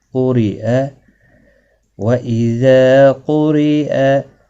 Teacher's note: را کو باریک پڑھا جائے گا زیر کی وجہ سے